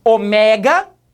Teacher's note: o som da sílaba forte, do O, foi fechado.